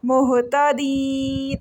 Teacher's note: ہاں ہلکی لیٹر، گلے کے آخری حصے سینے والی سائڈ سے پڑھا جائے گا. یا مدہ ہے، 1 سیکنڈ کے لیے اس کو لمبا کر کے پڑھیں گے.